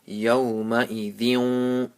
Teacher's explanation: After tanween, there's a waw, and waw is one of the letters of idgham. So you make a nasal sound, and at the end, give a little sound of waw.